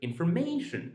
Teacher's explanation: If we take the word information, information, the syllables in this word don't have the same value, but actually, -mation is -ma- is louder than the other